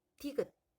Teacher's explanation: 디귿. 니은과 유사하게 혀끝이 윗잇몸을 건드리죠. 그럼 치조음이네요. 디귿. 막았다가 터지는 소리니까 파열음이 되겠습니다.